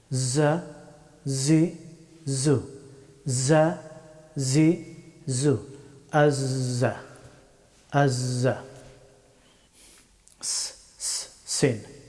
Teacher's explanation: হরফটি উচ্চারিত হয় জিহ্বার অগ্রভাগ এবং উপরের এবং নিচের সামনের দুই দাঁতের মধ্যখান দিয়ে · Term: যাই